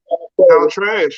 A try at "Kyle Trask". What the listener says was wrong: No, not trash. Trask with a K. Yes.